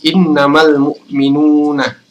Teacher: Jadi alif lamnya dibaca dengan jelas karena ini adalah alif lam qamariyah, yaitu manakala alif lam ini bertemu dengan salah satu huruf qamariyah yaitu mim.